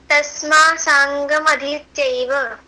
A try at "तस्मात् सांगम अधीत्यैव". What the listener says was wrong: तस्मात्, देखो आधा त है ना, वो स्पष्ट नहीं हो रहा, उसको वापस बोलो। तस्मात्।